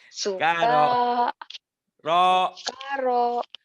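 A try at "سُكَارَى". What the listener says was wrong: bukan k-nya panjang ro-nya panjang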